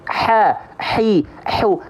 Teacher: tenggorokan maka nafas yang keluar atau sifat hams nafas yang keluar aliran nafas yang keluar itu karakteristiknya berbisik seperti orang berbisik atau seperti orang kepedasan